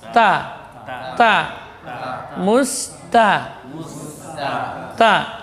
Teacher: ujung lidah juga di usul thanaya al-ulya, pangkal gigi atas